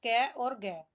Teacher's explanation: जिन व्यंजनों में उच्चारण में सांस की मात्रा कम लगानी पड़ती है, उन्हें अल्पप्राण कहते हैं।